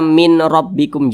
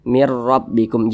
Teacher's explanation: nunnya ini langsung dimasukkan ke huruf ro Mir rabbikum begitu kemudian jangan didengungkan jangan digunahkan jadi dibaca pendek saja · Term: idgham bila ghunah